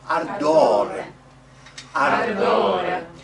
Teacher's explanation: I rolled a little bit too much on the R, it's just one.